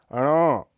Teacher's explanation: से हवा निकलने में ज्यादा घर्षण का अनुभव करती है अण यह अल्प प्राण घोष ध्वनि है इसका उच्चारण स्थल मूर्धा और नासिका है इसके उच्चारण में जीभ की नोक उलट करर मूर्धा को छूती